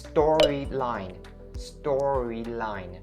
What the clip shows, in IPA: ˈstɔː-ri-laɪn